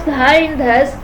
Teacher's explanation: It is also a fricative because it is pronounced by the tip of the tongue coming in between the teeth and air flows out with friction. Dha is voiced as vocal cords are vibrated in its articulation.